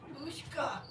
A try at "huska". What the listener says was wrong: Huska. No, not hushka. Huska. Yeah, huska.